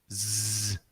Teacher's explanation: S, hay que hacer S, y al mismo tiempo vibrar aquí. La garganta tiene que vibrar. Si no vibra, es que no lo haces bien.